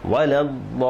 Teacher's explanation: দদে 4 আলিফ টান, শেষে লিতে 3 আলিফ টান